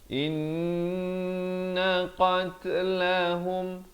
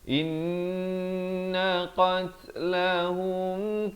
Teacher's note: Qat ada bunyi hamas, bunyi angin itu.